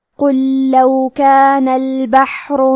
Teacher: حرف القاف کی ادائیگی زبان کے جڑ اور تالو کے نرم حصے سے ہے. قاف حروف التفخیم میں سے ہے تو ہم حرف القاف کو موٹی آواز میں پڑھیں گے.